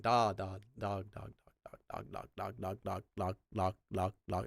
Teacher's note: you make the D as soft as you can until it sounds like an L